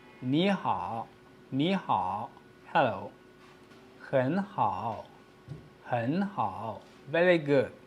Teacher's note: when the third tone is followed by another third tone, the former word is pronounced as a half third tone instead of two full third tones.